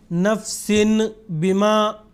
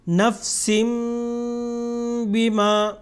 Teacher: اقلاب مطلب نون کی آواز کو میم میں تبدیل کر کے پڑھنا